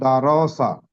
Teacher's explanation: র এর উপরে জবর আছে র কে পুর করে পড়তে হয়